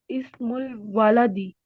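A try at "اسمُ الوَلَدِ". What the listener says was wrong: लंबा नहीं करना, वाला दी नहीं। वाला दी बाप बन जाता है।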